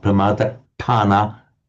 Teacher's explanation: Pamadatthana, strongly double T. Sikkapadam, strongly double K.